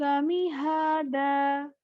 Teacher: دو زبر کی تنوین کو جب ایک الف سے بدلیں گے تو وہاں پر ایک الف کی آواز آئے گی، مد کی آواز نہیں آئے گی، یعنی آپ نے اس کو ایکسٹرا نہیں کھینچنا۔